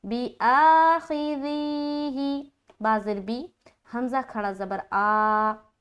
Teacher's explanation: अलीफ के हमज़ा के ऊपर जो खड़ा ज़बर है वहाँ पर एक अलीफ खींचना